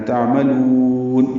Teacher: تعملون میں عین ساکن پہ اظہار ہے، یہاں پہ لام کو لمبا کرنا ہے